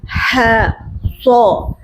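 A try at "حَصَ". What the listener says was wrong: Bukan soa. Nah, jangan soa. So. Dari awal sampai akhir bunyinya tetap o, jangan asalnya o jadi a. Soa. Nah, jangan. So.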